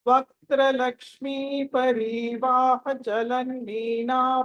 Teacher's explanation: వాహ అని అక్కడ బ్రేక్ తీసుకున్నప్పుడు వాహ ఎక్స్టెండ్ చేయొద్దు దాన్ని